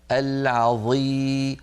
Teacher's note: مع كون الظاء مكسوره بقيت الظاء قويه